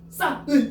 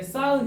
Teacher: 싸은. 그러면 싸은 이러니까 뭐가 발음이 안 돼? 히읗이 발음이 안 되지. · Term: 히읗 탈락